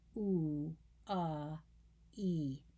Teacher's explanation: So from very rounded to what we call vowel neutral, and then unrounded. So oo to to e. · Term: roundness